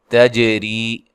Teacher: تا کو باریک پڑھنا ہے، جیم پہ قلقلہ کرنا ہے